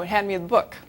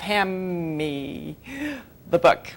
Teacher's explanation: the D isn't there at all. And the N isn't there either because it's become an M. And so you have ham me the book maybe with a longer M.